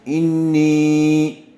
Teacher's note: زیر والے حرف کے بعد یا ساکن آئی ہوئی ہے، اس لیے نون کو تھوڑا کھینچ کر پڑھیں گے. یا مدہ ہوگا.